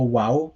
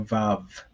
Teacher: One is that the letter Vav, that is the sound it currently makes, but in ancient Hebrew, it was most likely pronounced as a W sound. So it would have been called a wow rather than a vav. And like this is made more plausible by the fact that for those of you who speak other Semitic languages like Aramaic or Arabic, it is still called a wow.